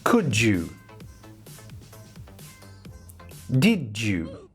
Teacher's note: All of them have a word which finishes with a D sound, followed by a word beginning with a Y sound. Now when we have a D at the end of one word and a Y at the start of the next word, these two sounds combine into J. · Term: assimilation